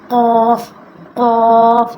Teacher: یہ زبان کی جڑ اور تالو کے نرم حصے سے ادا ہوتا ہے